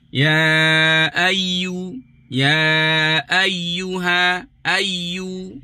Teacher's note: Ya makhraj dia tak bertemu. Jadi dia menyempit sahaja.